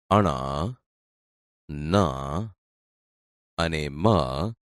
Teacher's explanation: દોસ્તો હવે આપણે અનુનાસિક ધ્વનિ વિશે જાણીએ અનુનાસિક ધ્વનિ મો કે મુખનો માર્ગ અવરોધને કારણે બંધ થઈ જતાં હવાનું મોજુ નાક દ્વારા પસાર થાય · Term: અનુનાસિક ધ્વનિઓ